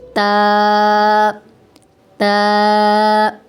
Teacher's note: تا زبان کی نوک اور ثنایا علیہ کی جڑ کے ساتھ جب لگے تو اس وقت تا، تا ادا ہوتا ہے